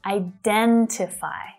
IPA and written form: aɪ'dentɪfaɪ (IDENTIFY)